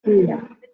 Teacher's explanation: You should pronounce it as Meghaha. The Gakara with the Mahaprana.